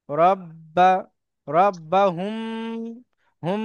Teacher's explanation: মিম সাকিনের পরে বা এবং মিম আসলে গুণনা সহ পড়তে হবে।